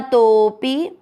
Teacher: आपको तो की मात्रा को लंबा खींचते हुए पी की मात्रा छोटी रखनी है,